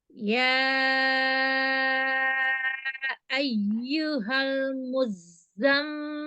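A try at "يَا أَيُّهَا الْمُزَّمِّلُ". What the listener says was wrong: Mil. Jangan terlalu panjang bainiyah inhiraf pada lam sukunnya. Lalu lam sukun yang pertama tambah lagi inhiraf bainiyahnya. Yang ayyuhal, sempurnakan. Ayyuhal.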